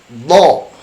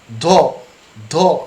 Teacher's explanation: tidak dihempaskan keluar, seolah-olah nafas itu ditarik ke dalam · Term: tidak menghempas